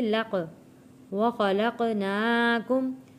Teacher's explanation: حروف قلقلہ ہے اور لفظ موٹا بھی پڑھیں گے، لق ناکم، یہاں پہ قاف کے اوپر زبر نہیں لگانا، صرف آواز پلٹ کر واپس آئے گی